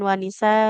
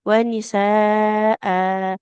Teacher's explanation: Apabila huruf hamzah di akhir ya posisinya kita wakaf terus tanwin fathah maka dipanjangkan. Jadi bukan wanisa tapi wanisaa khusus untuk tanwin fathah pada hamzah di akhir ya seperti itu panjang dua harakat.